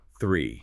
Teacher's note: It is notoriously difficult for non-native speakers to master because it requires that unvoiced the sound. Your tongue literally has to come physically through your teeth, pushing air out before it immediately pulls back into the mouth for this position. And then finally widens into the E vowel.